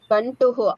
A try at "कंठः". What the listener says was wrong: कंटु नहीं है, कंठ है।